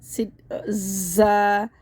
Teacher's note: زا میں سیٹی کی آواز آئے گی.